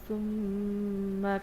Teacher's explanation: میم کی آواز کو الف جتنا لمبا کرنا ہوتا ہے، اور الف جتنا لمبا کتنا ہوتا ہے؟ تقریباً 2 سے 3 سیکنڈز · میم کرتے وقت آپ نے 2 کام کرنے ہوں گے، ایک تو دونوں ہونٹوں کو ملا کے رکھیں گے اور دوسرا کام آپ نے یہ کرنا ہوگا کہ ناک کے بانسے سے آواز لائیں گے، تو اس سے میم غنہ یعنی کہ میم مشدد پر غنہ آپ لوگ ایزیلی کر سکیں گے۔